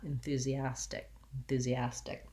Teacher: there's not a lot of release of air on that enthusiastic enthusiastic you might think about it as a light d sound